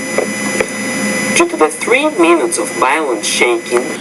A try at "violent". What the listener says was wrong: You need to pronounce the V with more vibration. And then minutes, not minutes, but minutes. Violent.